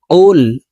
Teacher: কফ হরফ জিহ্বার গোড়া তার বরাবর উপরের তালুর সঙ্গে লাগাইয়া উচ্চারণ করতে হবে